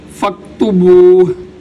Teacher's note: تو یہاں پر فاکتبوہ کے اوپر وقف کرتے ہوئے ہا کی آواز لازمی آنی چاہیے